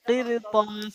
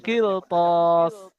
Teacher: র সাকিনের পূর্বে জের এবং পরে হুরফের মুস্তালিয়া 7টি অক্ষরের মধ্যে থেকে ত এসছে, তাই একে কি করে পড়বো? পুর করে পড়বো।